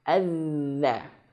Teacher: ujung lidah menyentuh ujung gigi seri atas. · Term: huruf dzal